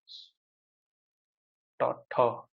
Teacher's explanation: हाँ वो जो है ठ तो अघोष है